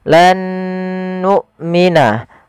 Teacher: Huruf hamzah wajib dia dibaca dengan jahar dan syiddah.